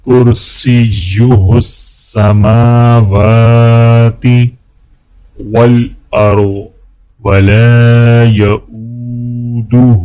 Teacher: میم اور واو کے اوپر کھڑا زبر ہے تو دونوں کو ایک الف کے برابر کھینچ کے پڑھا جائے گا